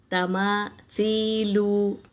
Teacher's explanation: सा को दोनों दांतों के बीच में ज़बान की टिप्स डालकर अदा करेंगे